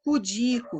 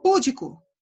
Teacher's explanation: A sílaba tônica é o di, então é pudica, é uma palavra paroxítona